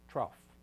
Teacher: with a r in trough it's almost like a CH sound